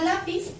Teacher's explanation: Tenemos la palabra lápiz, si separamos en sílabas queda así, se carga la voz también en la penúltima sílaba